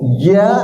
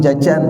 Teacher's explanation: Beda ja dengan ja. Ja tidak keluar hawa. Ya, biasanya kita mengucapkan huruf C, ya. C itu ada hawanya keluar itu. Ini enggak.